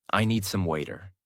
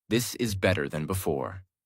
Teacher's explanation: The tongue touches quickly and moves on. That is why it sounds softer.